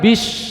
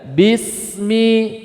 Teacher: ingat Sin itu dari ujung lidah bukan dari pertengahan lidah